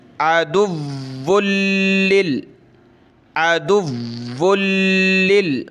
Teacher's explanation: वाव को सख्त कर रहा हूँ, तशदीद है, लाम को सख्त कर रहा हूँ, तशदीद है